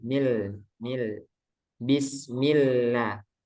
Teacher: pada basmalah, bismillah, lamnya tipis itu.